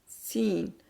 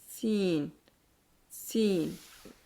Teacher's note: और इस को अदा करते वक्त आवाज और सांस दोनों जारी रहते हैं। और मुंह के अंदर आवाज में एक किस्म की सीटी की सी आवाज पैदा होती है। क्योंकि जाहिर है दांत बंद है तो आवाज सिटी की सी आएगी।